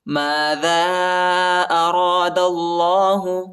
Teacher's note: الف پر جو ہے چھوٹا مد آیا ہے، اس کو تقریباً 2-3 سیکنڈ تک کھینچنا ہے اور را کو موٹا پڑھنا ہے. دال کو لام کے ساتھ ملائیں گے اور اللہ کے نام کو جو ہے موٹا پڑھنا ہے، پر پڑھنا ہے